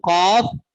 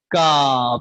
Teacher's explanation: जुबान की जड़ जब इस कौवे से लगेगी तो कौफ अदा होगा, और थोड़ा सा आगे मुंह की तरफ जुबान ऊपर तालू से लगेगी तो क्या अदा होगा? काफ। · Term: हरूफ लहातिया